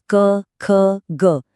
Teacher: आवाज सीधे गले से कंठ से आती है